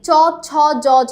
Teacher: কোন ব্যঞ্জন ধ্বনি বর্ণসমূহের উচ্চারণ স্থান অগ্রতালু, সামনের তালু দিয়ে আমরা উচ্চারণ করছি কি চ ছ জ ঝ, আমাদের সামনের জিভের সম্পূর্ণ অংশটা লাগছে, ঠিক আছে, তালুতে